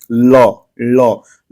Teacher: जो पूरा जीभ का जो अगला सिरा है वह पूरा जो है आपके तालू को पीछे की तरफ टच कर रहा है या छू रहा है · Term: पार्श्विक ध्वनि